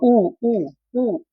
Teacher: इसमें ओंठ हमारे लगभग टच हो जाते हैं, ये आपका ओष्ठ है